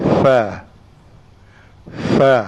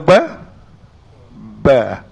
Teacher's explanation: suara Fa tak ada di dalam tahan maksudnya dia adalah suara lepas